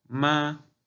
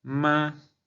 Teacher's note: el primer tono, que es un tono elevado. Vamos a pronunciar la palabra ma, pero vamos a imagina que estamos cantando.